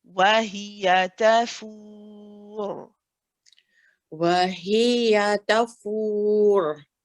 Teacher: The ra here is heavy when we stop.